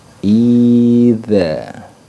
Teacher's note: Sedangkan idza dia sifatnya jahar dan rokhawah